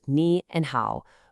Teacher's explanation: Just 2 simple syllables, ni and hao, both with that falling then rising tone